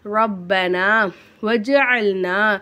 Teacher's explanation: ஜீமுக்கு மேலே சுக்குன் இருக்கனால ஜீமை வந்து நம்ம அசைச்சி ஓதணும்